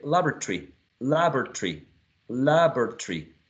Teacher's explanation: some speakers would produce three syllables and not four